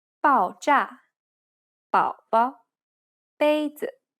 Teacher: The first consonant is b, 爆炸，宝宝，杯子， Be careful, because this isn't like a hard B sound. This is the unaspirated version of the P sound as it occurs in the word span.